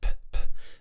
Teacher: make sure you're not voicing it it's unvoiced p